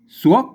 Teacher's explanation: ถ้าเป็นไตโยนเชียงใหม่มันเสียงจัตวานะครับ